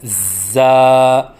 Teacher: پڑھنے کا طریقہ: زا کی ادائیگی کے وقت زبان کو دونوں دانتوں کے درمیان لائیں اور سیٹی کی آواز نکالیں، کیونکہ زا میں سیٹی کی صفت ہے، اور پھر منہ کھولیں، کیونکہ الف کی ادائیگی منہ کے کھولنے سے ہوتی ہے، اور ایک الف کے برابر لمبا کر کے پڑھیں، جیسے زا، نہ ایک الف سے کم ہو جیسے زا، اور نہ ایک الف سے زیادہ ہو جیسے زا۔